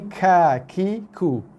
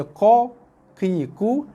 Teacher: bunyinya lebih nipis berbanding dengan bunyi huruf qaf. Dia bunyi qa, ki, ku, yang ni ka, ki, ku.